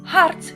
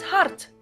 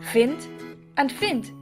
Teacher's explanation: A D or a T at the end of a Dutch word is pronounced exactly the same. Hart sounds the same as hart.